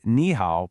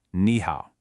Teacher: When two third tones show up back-to-back like in ni hao, the first one just transforms into a second rising tone.